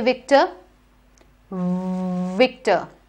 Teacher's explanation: your upper teeth need to rest on your lower lip they need to bite